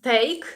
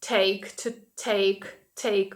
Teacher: українського це не тейк не тутейк а Take To Take take ми вимовляємо його з придихом